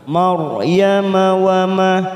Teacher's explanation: ora sukun ditambah fathah kita baca tafkhim